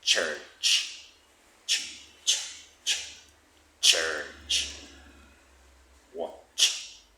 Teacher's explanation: they start from a stop and then they turn into fricatives. That means like and then there's a release with kind of hissing. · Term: africates, affricates